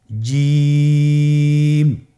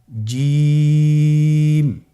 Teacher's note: জিহ্বার মধ্যখানটা লক্ষ্য করুন এবং তার বরাবর উপরে তালুর সঙ্গে লাগান, এরপর হরফটি উচ্চারণ করুন